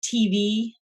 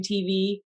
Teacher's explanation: they really do have the exact same amount of stress on both syllables, some people think of that as a spondee, but I feel like almost always you're stressing one of them a little bit more.